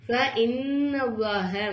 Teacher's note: நூனுக்கு மேல சத்து வந்தனால நூனு நம்ம நல்லா அழுத்தி உச்சரிக்கணும்